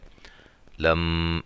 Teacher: میم مشدد پہ غنہ